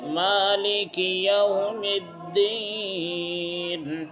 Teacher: یا مدہ، کتنا کھینچیں گے؟ ایک الف کے برابر